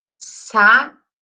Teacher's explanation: Eu vou falar mais forte essa sílaba aqui, o bi.